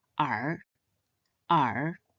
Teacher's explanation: It is pronounced in the third tone